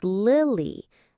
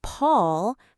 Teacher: The second L is also before a vowel, so it's also light, li. So the name Lily has two light L's, but a name like Paul has one dark L at the end.